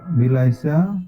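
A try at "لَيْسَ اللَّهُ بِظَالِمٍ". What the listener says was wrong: বি লাইসে না, লাইসে ওই উপরে স্ল্যাশের উপরে লেখা আছে, দেখে নেন।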